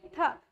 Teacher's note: त जो है वो दंत का उच्चारण स्थान है, दंत से बोला जाता है, मतलब कि दांतों से बोला जाता है। तो हम एक बार बोल के देखते हैं, क्या हमारी जो जीभ है वो दांतों पे टच हो रही है या नहीं?